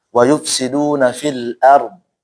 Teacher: Ra-nya tebal, dotnya juga tebal.